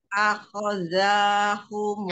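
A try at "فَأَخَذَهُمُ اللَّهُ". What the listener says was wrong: Ah, enggak panjang. Fa'akhadzahumullah.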